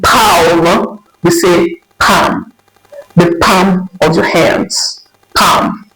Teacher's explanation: we have letter L here, but in its pronunciation, the L is actually silent